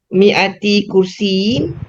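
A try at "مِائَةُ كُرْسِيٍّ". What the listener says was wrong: Mi'atu bukan mi'ati.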